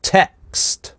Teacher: That - здесь гортанная смычка, /t/ замещается. Text здесь /ɛ/ краткий слог, дальше идет стоп, поэтому усиливающая гортанная смычка